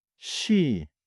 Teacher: The shi slides toward a soft sh, not a sharp hiss. >> Same letter shi, but the e pulls it gently toward sh.